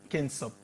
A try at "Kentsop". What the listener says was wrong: Oui, il y a un T. D'abord Orgel, Kent et puis Kensop.